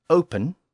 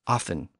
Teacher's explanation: We can also see the same change in the English word open, with the P sound, and the German version of the same word, which is offen, with the F sound